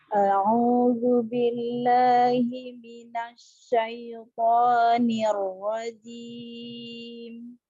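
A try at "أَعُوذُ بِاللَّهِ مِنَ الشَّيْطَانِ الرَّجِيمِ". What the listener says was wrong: Ahsan, jimnya lagi dikuatkan, ditempelkan tengah lidah bersama langit-langit atas. Ar-rajim, jim. Lesa jim. Kenapa bunyinya seperti itu? Ya, karena kurang kuatnya menempel pada makhrajnya ya. Ar-rajim, jim.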